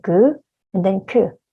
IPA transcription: g ㄱ and then k ㅋ